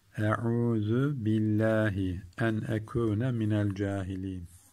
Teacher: Ayın harfinde boğazımızı sıkalım biraz.